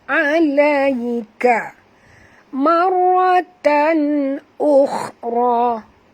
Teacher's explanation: Ra sini ada tasydid, jadi kita kena baca tekan ataupun jud. Marratan, 2 kena baca tebal. Kerana ra yang pertama mati, ra yang kedua baris atas.